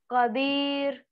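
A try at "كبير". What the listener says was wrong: काफ को मोटा करके पढ़ना है। का का प्रोनाउंस थोड़ा अलग कर रहे हैं आप।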